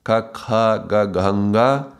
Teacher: We are doing these gutturals, ka, kha, ga, ganga, vibrating around the area of the throat.